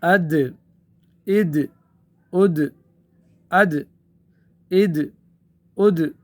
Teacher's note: اس دال کو ہم ساکن کریں گے تو اس میں قلقلہ ہوگا